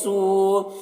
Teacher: سو یہاں پر واو مدہ ہے تو اسے تھوڑا کھینچ رہے ہیں